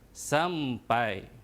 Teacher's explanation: diftong mesti dibaca dalam satu suku kata. Pai mesti dibaca dalam satu suku kata. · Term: diftong AI